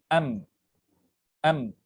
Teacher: جہاں پر آپ کی آواز رک رہی ہے یا جہاں پر آپ کے لپس جیسے یہاں پہ آپ دیکھ سکتے ہیں لپس جہاں پر میٹ ہو رہے ہیں وہی ہے مخرج میم کا